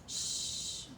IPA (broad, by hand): ʃ